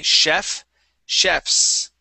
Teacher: Okay, it's chefs with that voiceless S, okay? So if we don't have an ES at the end, okay, we pronounce that like an S sound, okay?